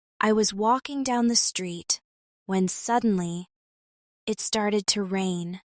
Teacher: Notice how when suddenly is said faster and then it started to rain slows down. This rise and fall in rhythm makes your speaking sound engaging and natural.